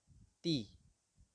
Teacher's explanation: Ta adalah ujung lisan kita, ujung lidah kita disentuhkan ke pangkal gigi seri bagian atas.